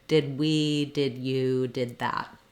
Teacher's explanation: If the next word starts with a consonant, as in did that, I do use that unreleased D. Did that, I just release right into the TH sound or the other consonant sound.